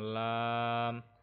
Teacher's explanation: Kita baca lam itu kepanjang. Lam, bukan lam 2 harokat, tapi lam sangat panjang ya. Nah, kenapa di sini 6 harokat, di sini 2 harokat?